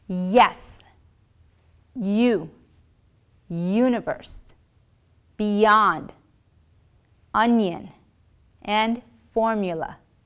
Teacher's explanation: Your tongue is high, like the position for the vowel e, but your tongue is at the center of the mouth. The air is flowing without interruption.